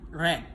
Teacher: alat ucap saling mendekat tanpa menimbulkan gesekan